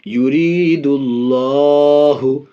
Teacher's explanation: پڑھیں گے حدود اللہ یرید اللہ یہاں بھی دال میں پیش اللہ کے لام سے پہلے دال میں پیش اس لیے اللہ کے لام کو پڑ یعنی موٹا پڑھیں گے